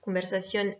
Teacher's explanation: conversation est un mot qui est accentué sur la dernière syllabe, puisque comme pour tous les mots qui se finissent par ON ou ION, on a un accent écrit, c'est obligatoire.